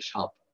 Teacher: দন্তস্ব আকার প বানান করছি, উচ্চারণ করছি তালব্য দিয়ে সাপ। তালব্য আকার প আর দন্তস্ব আকার প একই ব্যাপার।